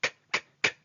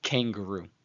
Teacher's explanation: Okay, because when the dot is present, the letter is referred to by its first name, kaf, which is a voiceless velar plosive. It makes a k, k, k sound, as in the word kangaroo. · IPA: /k/